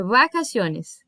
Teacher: O V, ele é um som no meio do caminho. Ele não é nem um B e nem um V, igual no português.